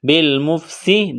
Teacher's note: سین میں سیٹی کی آواز پیدا کریں گے